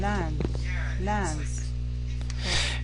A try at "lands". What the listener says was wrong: Now, that S sound, you want to make it more of a Z after a voice consonant. So it's lands, runs, reaches.